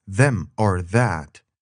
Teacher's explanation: it's a buzzing sound made with your tongue against your upper teeth